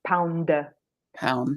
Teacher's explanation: a word like pound the D is there but it's not released